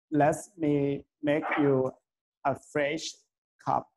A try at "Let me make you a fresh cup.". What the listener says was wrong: Let me. There is no S there. Let me make you a fresh cup. Fresh cup.